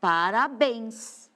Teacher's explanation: a palavra parabéns a minha sílaba mais forte a última ó Parabéns esse bens é forte para eu saber se tem